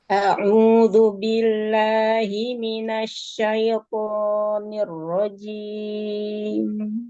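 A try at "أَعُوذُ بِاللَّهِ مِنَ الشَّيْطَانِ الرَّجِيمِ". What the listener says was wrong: Huruf linnya jangan terbagi ke hidung ya. Asyaiton.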